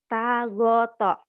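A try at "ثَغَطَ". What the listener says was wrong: Itu titiknya 3 bukan tak. Heeh, heeh, sa ya. mungkin tadi ngomong kamu juga sa, cuman kedengeran sama saya kayak tak ya. Sa. Sagoto.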